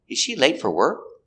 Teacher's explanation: We stress important words. Late is the important word.